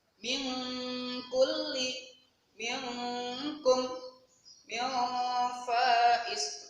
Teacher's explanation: Nah, sebenarnya yang diganti dengan suara ang ini apabila ada nun mati atau tanwin yang bertemu dengan huruf ini loh. Nah, kalau bertemu dengan huruf fa, qaf dan kaf, maka benar-benar diganti dengan suara ang. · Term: ikhfa